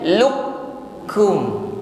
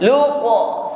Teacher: karena di sini qaf sukun setelahnya bertemu dengan huruf kaf, maka huruf qaf di sini harus dileburkan. Ya, artinya langsung kita masuk fokus menekan pada huruf kaf, bukan lagi mengucapkan huruf qaf. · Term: idgham mutaqarribain